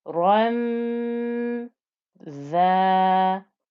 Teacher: Dhal is made with the tip of my tongue through my teeth, so between the top and the bottom teeth, through the teeth, and then I flow the noise through.